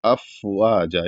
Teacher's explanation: افواجا، افواجا، اس طریقے سے اس کو ادا کریں گے، افواجا، یعنی فا جب ادا کریں تو ہلکا سا ہوا منہ سے جیسے نکلتی ہے اس طریقے سے نکلے، افواجا۔